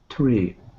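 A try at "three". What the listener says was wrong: So you're saying tree, right? This is what I'm hearing is tree. You're not doing the TH sound. So to start off, put your tongue in between your teeth so no air can get out and puff out.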